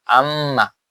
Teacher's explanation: বললাম আম বা আম্মা, আলিফ মিম জবর আম, মিম জবর মা, আম্মা, তাহলে আম হইতে কি হচ্ছে যে দুই ঠোঁট মিলিত হয়ে যাচ্ছে, তাহলে এটার মাখরাজও এখানে দুই ঠোঁট মিলিয়ে, এখানে মাখরাজ দুইটা, একটা গেল।